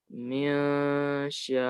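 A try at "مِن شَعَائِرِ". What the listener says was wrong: Dikit lagi tambah gunahnya, ikhfanya.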